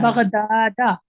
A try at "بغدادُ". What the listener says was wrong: نہیں, بغدادہ نہیں کہیں گے, بغدادو کہیں گے, کیونکہ آپ ہاں اس کو آپ کیا بنا رہی ہیں بغدادو کو, وہ اعراب دینا جو بنا رہی ہیں. بغدادو الف بھی آئے گا, بغدادو.